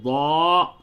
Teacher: ضاد زا یا دال نہیں ہوگا بلکہ ضاد، زبان کا جو سائیڈ ہے، جو کنارہ ہے، اس کو داڑھ سے لگائیں تو ضا